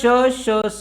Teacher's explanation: हे उष्मे घर्षक सुद्धा आहेत ही कठोर व्यंजने सुद्धा आहेत आणि ही महाप्राण सुद्धा आहेत